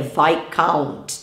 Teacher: A gente não pronuncia o S dessa palavra também